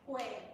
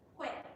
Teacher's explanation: hui, with a longer open syllable means age, whereas hui, ending in the glottal stop, means blood. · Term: syllable duration